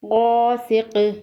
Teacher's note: وقف کی صورت میں قاف پر قلقلہ ہوگا